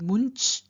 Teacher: For example, if you take the root much, which means to release or to free, then the present tense stem is muncha. Now, the nasal that we find added in front of ch, which is a palatal sound, is the palatal nasal